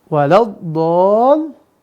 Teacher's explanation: Mad tabi'i bertemu dengan apa? Dengan huruf bertasydid. Maka bacanya berapa panjangnya? 6 harokat. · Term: mad lazim kilmi mutsaqal